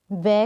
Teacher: वै का उच्चारण स्थान दंत और ओष्ठ होता है, इसे दंतोष्ठ्य कहा जाता है। जब हम वै को बोलते हैं तो हमारे जो दांत है वे ओष्ठ में लगते हैं, इसलिए इसका उच्चारण स्थान दंतोष्ठ है और इसे दंतोष्ठ्य कहा जाता है।